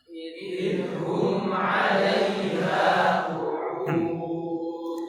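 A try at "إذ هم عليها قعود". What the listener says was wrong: Panjangkan suaranya. Idhum. Jangan dipangkas suaranya. Idhum, tidak. Jadi dzalnya biar mengalir saja.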